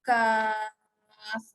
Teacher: Jadi huruf pertama huruf kaf dibaca kaf, nama huruf 6 harakat.